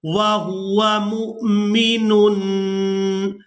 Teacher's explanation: تنوین میں جو نون کی آواز ہے اس کو ہم نے ناک میں چھپا کر ادا کرنا ہے۔ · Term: اخفا